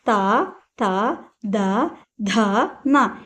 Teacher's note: త ద ధ న ఇవన్నీ మనకు దంత్యాలు అంటే దంతాల నుండి పుట్టినవి . చూడండి మనం థ అన్నప్పుడు మన పళ్ళు అనేది టచ్ అవుతూ ఉంటుంది